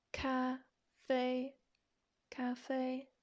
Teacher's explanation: it doesn't go up it doesn't go down so it's kind of like ah just straight across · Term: first tone